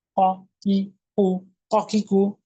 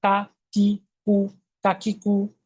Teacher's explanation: কফ ঊর্ধ্বমুখী কলকলা, কাপে কোনো কলকলা নেই।